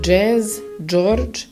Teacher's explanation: Dž, so it's hard, like Jazz, George, and again the tip of the tongue close to your teeth.